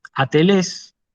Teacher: Atelés, esto significa imperfecto, que no llegó al telos, que no llegó al fin, ¿sí? Atelés, fíjense que esa alfa se lee sin aspiración